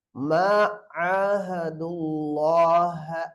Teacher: அல்லாஹ்வுடைய லாமுக்கு முன்னால தம்மா இருக்கறனால அல்லாஹ்வுடைய லாம தஃகீம் சொல்லுங்க வல்லினமாக ஓத வேண்டும்.